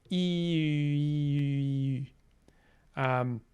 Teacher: that nice front rounded vowel that you see in French and German, ü, which, if you've ever been curious how to pronounce that sound, you make e and then round your lips.